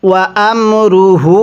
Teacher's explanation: এই হায়ের মধ্যে আমরা 3 আলিফ টান দিব। যদি হায়ে জমিরের উপরে এরকম চিকন চিহ্ন এরপরে লম্বা হামজা থাকে তাহলে সেই হায়ে জমিরটিকে 3 আলিফ টেনে পড়তে হয়।